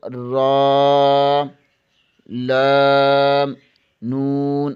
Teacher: زبان کے کنارے کی پشت اوپر والے دانتوں کے مسوڑوں سے لگے تو را، لام، نون ادا ہوتے ہیں